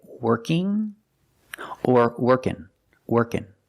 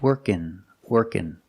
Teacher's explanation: We have two pronunciations for ing. I can say working or workin', workin', with just the N sound.